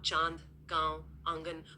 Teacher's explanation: आप चांद, कांव, आंगन बोल कर देखिए। ध्वनि में गूंज और फैलाव सा है। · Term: अनुनासिक